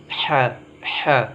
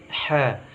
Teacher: tengah tenggorokan dihembuskan udaranya, ha bersih tipis